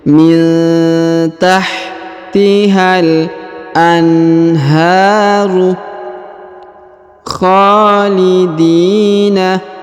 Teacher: Huruf ha dipanjangkan 2 harokat karena di atasnya terdapat alif kecil.